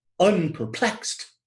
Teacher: you have a stressed syllable, then an unstressed syllable, then a stressed syllable, as in unperplexed, which we refer to as a cretic foot.